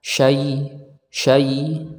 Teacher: huruf ya makhrajnya Di mana yaitu Tengah lidah ya dengan langit-langit atas akan tetapi Dia mendekati saja ya ada tekanan syai syai nah tidak menempel